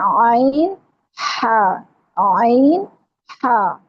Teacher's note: ये दोनों हरूफ जो है ना यह बारीक पढ़े जाएंगे। इनको मोटा नहीं करना। · यह दोनों हरूफ जो है हलक के दरमियानी हिस्से से अदा होते हैं और जुबान जो है उसकी जड़ पीछे जो है ना ऊपर को उठ जाती है। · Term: वस्ते हलक